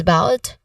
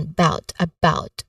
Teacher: In the second syllable of about, which is about, and then the first syllable is a schwa sound